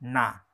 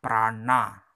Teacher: Lalu anuswaranya adalah na. Ini tebal ya, ujung lidah diangkat, na.